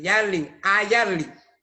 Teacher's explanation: Palenquero utiliza la A con la boca abierta de A. Dice Yarling, Yarling.